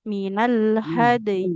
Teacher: Huruf dal harus dipantulkan dulu.